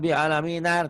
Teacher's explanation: Hamzah wasol itu apabila disambung tidak bunyi dia.